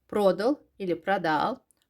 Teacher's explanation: Vurğu hər iki saitdə düşə bilər. Kişi cinsində və cəmdə.